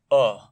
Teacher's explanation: अ का उच्चारण जब जिह्वा के आधार पर करें तो ये मध्य भाग से उच्चारित होता है